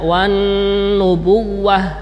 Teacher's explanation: pada tasdidnya wawu dibaca secara cepat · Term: wawunya tasdid